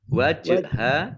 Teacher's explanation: jim sukun, bacaan kolkolah atau bacaan memantul, dibaca memantul